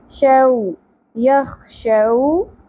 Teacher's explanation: واؤ ساکن حرف لین ہے شو نہیں پڑھنا شو نرمی سے